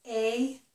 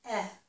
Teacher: A is a tense vowel. That means my tongue muscles will be tight in my mouth. And E is a lax vowel. So my muscles will be relaxed.